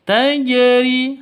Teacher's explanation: Jika sukun seperti itu, tajri, maka harus dipantulkan pada huruf jim. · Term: qalqalah